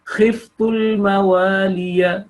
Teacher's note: ya should be short because 1 second, because there's only one fatha on that